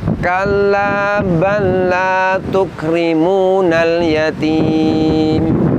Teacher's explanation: Pada lafaz balla di situ lam sukun diidghamkan ke huruf lam fathah setelahnya. Ini adalah contoh idgham mutamatsilin.